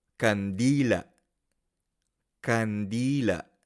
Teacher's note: Tiene énfasis fuerte en la penúltima sílaba di y la última sílaba se pronuncia con un cierre glotal